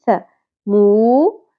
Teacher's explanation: آئے گی۔ ث مو، واو حرف مدہ آ گیا، واو ساکن سے پہلے پیش، مو ایک الف کے برابر کھینچیں گے